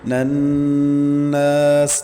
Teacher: نون مشدد کا غنہ ہے، یہاں پہ غنہ کریں گے اور نون کے بعد الف مدہ ہے، 1 الف تک کھینچیں گے۔